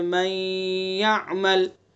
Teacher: نون کا یا میں ادغام کیا جو نون ساکن ہے، لیکن ناقص کیا، پہلے حرف کی آواز باقی ہے، نون کی آواز باقی ہے، من یعمل، تو یہ ہوا ادغام ناقص.